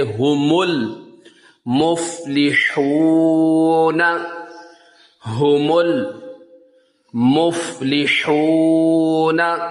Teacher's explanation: الف یہاں پہ نہیں پڑھا جائے گا، میم کو لام کے ساتھ ملائیں گے